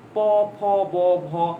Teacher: আপনি আরো সামনে আসেন, সামনে দেখবেন ঠোঁট লাগে, যেমন আপনি দেখবেন প ফ ব ভ, এগুলো কিন্তু ঠোঁট ছাড়া বলা সম্ভব না